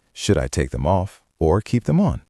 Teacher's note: It goes up at the end of the first clause and down at the end. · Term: intonation